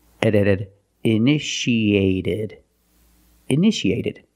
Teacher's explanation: the second T is between vowels so we pronounce it like a fast D